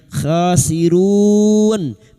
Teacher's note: bertemu mad dengan huruf hidup yang dibaca waqaf mad arid li sukun 4 harakat kita panjangkan